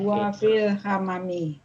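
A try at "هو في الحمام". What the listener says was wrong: Benar, ahsanti sahih.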